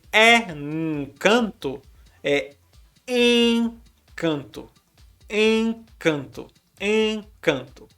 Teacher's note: Então nós temos 7 letras e nós temos 5 fonemas, porque 2 vezes o som de N está causando apenas a nasalidade para a vogal que está vindo antes